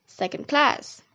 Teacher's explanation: Compound which combines a number and a noun has the primary stress on the second word and secondary stress on the first word, like in the word second class.